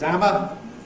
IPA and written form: ˈæmə (hammer)